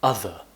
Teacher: we pronounce it as other with the tongue between the teeth in native English.